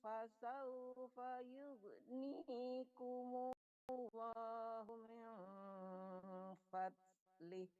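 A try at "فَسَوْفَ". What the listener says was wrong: Hilang fasaufa, ulang Ibu. Dari fasaufa, tadi kedengaran jub apa gitu.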